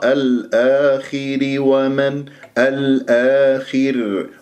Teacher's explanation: لدينا في كلمة الآخر الألف ساكن قبلها همزة مفتوح مد بدل حركتين، الخاء مفخمة مرتبة أخيرة، خامسة مكسورة، وأقف على راء ساكنة قبلها مكسور تكون مرققة، وفي الوصل أيضا تكون مرققة لأنها ستكون الراء مكسورة.